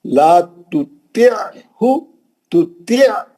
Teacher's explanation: خالی زیر کے بعد ہاف پڑھ رہے ہیں، عین چھوڑی دے رہے ہیں